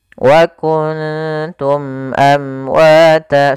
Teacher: kita baca suara mimnya dengan jelas dan tidak ditahan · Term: izhar syafawi